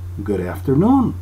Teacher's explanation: Tenemos aquí una palabra que se junta con otra, la palabra termina con D, y se une con una palabra que empieza con sonido vocal. Entonces aquí tenemos que se une la palabra, como decir una sola palabra, pero la D no se pronuncia D sino R. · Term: sonido R